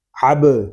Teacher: عین با زبر اب، عین حلق کے درمیان والے حصے سے ادا ہوگا، تو جب عین کو ادا کریں گے تو حلق پر زور دے کر اس کو ادا کریں گے، اور با ساکن ہے، اس میں کلکلا ہوگا